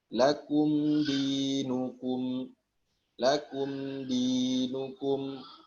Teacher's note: Di mim sukun gunahnya ada. Ya kalau nggak percaya, pas ngomong lakum, coba pegang ini hidung.